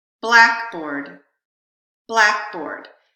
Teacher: There's so much stress on black, the word black, that in this context, board gets what we call tertiary stress. If I were only saying the word board, that vowel would have stress.